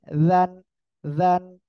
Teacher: জিহ্বার আগায় দুই দাঁতের আগার সঙ্গে লাগাতে হবে। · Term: জান নরম